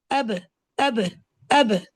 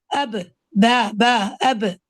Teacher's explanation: इसमें जो क्लोजिंग है वो strong upper and lower lips की जो क्लोजिंग है उसमें एक स्ट्रेंथ है। ब जो है उसमें एक स्ट्रेंथ है। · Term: हर्फ ब